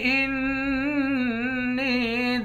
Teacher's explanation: نون کو یا کے ساتھ ملا کر یا کو 1 الف کے مقدار کھینچ کر پڑھیں گے